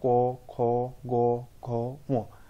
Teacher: जो वर्ण उच्चारण समय वायु प्रथमे कंठ पाखे बाधाप्राप्त हुए एवं जीभर पछ भाग तालुरे बाजे ताकू कंठवर्ण कहुए